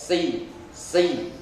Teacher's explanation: Kesalahan membaca so yang ketiga adalah tidak mengangkat pangkal lidah, si ya, tidak mengangkat pangkal lidah sehingga mirip sin ya. Yang betul adalah ujung lidahnya tetap nempel di bawah, mirip sa, si, tapi pangkal lidahnya ngangkat.